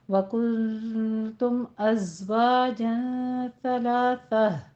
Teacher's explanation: अज़ में सख्ती करनी है आपने, थोड़ी सी सीटी की आवाज़ लानी है, ज़्यादा नहीं। सलासा में बिल्कुल नरमी के साथ पढ़ना है, सा में सीटी की आवाज़ नहीं आनी चाहिए। कुल तुम में आप देखिए नून साकिन का कायदा इख्फा और इख्फा की और तुम में इजहार शफ़ी हो रहा है।